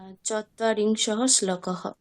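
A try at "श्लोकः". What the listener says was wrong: চত্বারিংশः শ্লোকः, শোকः হয়ে গেছে।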